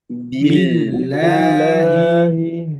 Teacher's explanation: billahi lamnya tipis ya, karena sebelumnya kasroh.